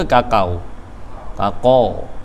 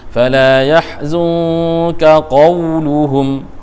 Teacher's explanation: Tetap bunyi dia kena qa, bukan kakau. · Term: tafkhim